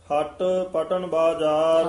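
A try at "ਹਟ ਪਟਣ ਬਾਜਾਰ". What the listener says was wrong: हाँ, पटन नहीं कहना हट कसके बोलना पिछे रहसियो पद पूला ही उच्चारण करना रहसियो नहीं कहना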